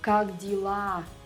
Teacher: You might not even notice, but you're probably already saying g at the end of как, because the next word starts with a voiced consonant